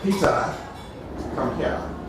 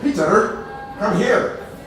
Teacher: The Scottish R is a very strongly pronounced R with a point trill on the end of it.